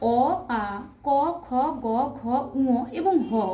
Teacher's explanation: এইগুলির উচ্চারণ স্থান হচ্ছে কণ্ঠ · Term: কণ্ঠ বর্ণ